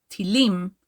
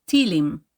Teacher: when we use it as a slang term we stress the second to last syllable